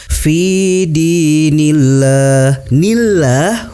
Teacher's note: hukum bacaannya adalah tarkik, dibaca tipis, dipanjangkan 2 harokat.